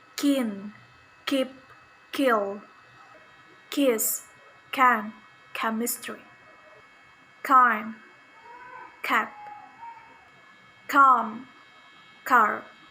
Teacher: voiceless velar stop sound